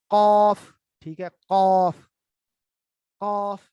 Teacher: जबान का आखिरी हिस्से को जो पीछे तालु का आखिरी हिस्सा है जो नरम हिस्सा है वहां उसके साथ मिलाएं, कौफ, तो वहां से अदा होगा।